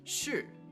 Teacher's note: is really fun too and it's known as the falling tone this is a tone that starts off at a certain pitch and then sharply drops